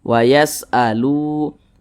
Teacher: mad tabi'i panjangnya itu 2 harokat.